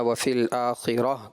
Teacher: اور دوسری غلطی بیٹا آپ سے یہ ہوئی لہم البشریٰ فی الحیات الدنیا وفی الآخرہ، گول تا جو تھا وہی جو ہم نے عرض کیا حامد رضا کو بھی، وہی غلطی آپ کی بھی آئی، گول تا کو ہا ساکنہ سے بدلنا تھا، وہ آپ نے نہیں بدلا۔